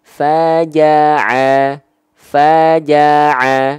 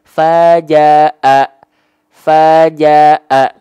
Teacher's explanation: Kalau ain dilafalkan dari tengah tenggorokan. Ya, pastikan tepat dari bagian tengah tenggorokan.